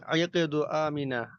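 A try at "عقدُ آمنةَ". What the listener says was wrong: আমিনাতা, আমিনা তা গোলতা আছে না এখানে? ইকদু আমিনাতা,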